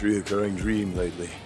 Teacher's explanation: instead of dream with a very specific DR, he says dream with more of a JR